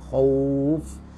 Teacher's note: kha-nya tetap dibaca dengan isti'la ya, khauf. Membaca khauf sama karena di sini harfulin, karena dia waqaf maka dimulhaq dengan arid li sukun 2 4 6.